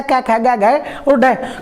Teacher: ख कहां आएगा कै वर्ग में, और कै वर्ग का उच्चारण स्थान कंठ है